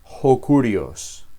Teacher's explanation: el acento de ho se traslada a la palabra posterior. Este tipo de palabra se llama proclítica.